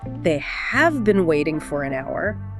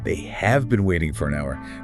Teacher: Notice how have been almost squishes together. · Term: vowel reduction